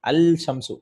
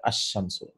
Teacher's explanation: The Al Huruf Shamsiya, the Lam is not pronounced.